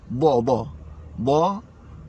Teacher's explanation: Huruf dha lidah duduk tepi. Dha. Naud lidah duduk tepi, dan huruf dha tidak ada qalqalah.